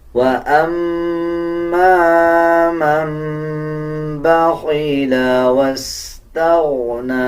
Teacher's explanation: جب نون کے اوپر جزم ہو اس کے بعد با آ رہا ہو تو پھر چھوٹا میم ایڈ ہو جاتا ہے اور میم کو جب پڑھیں گے تو غنہ کیا جائے گا